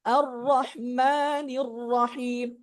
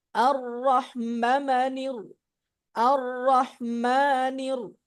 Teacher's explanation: এক আলিফ মাদ হবে 2 হরকত পরিমাণ